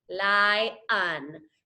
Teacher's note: So you divide the syllable between the 2 vowels. Here we have a long vowel, and then that second vowel again makes that lazy, lazy schwa sound